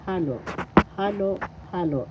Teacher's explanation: First syllable ha, second syllable lo. The accent is on the first syllable halo, halo, and that's repeated halo, halo, halo.